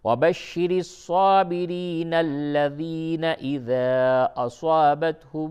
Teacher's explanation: اور اگر ملا کر کے پڑھیں گے تو الف گر جائے گی